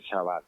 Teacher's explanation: Pronuncia también la che del español en general, la pronuncia como en francés o en portugués